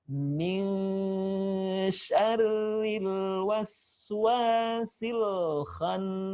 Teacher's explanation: Bukan min sya, tapi min, 2 ketukan baru kemudian sya